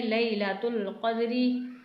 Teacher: قاف کو آپ کو حلق سے ادا کرنا ہے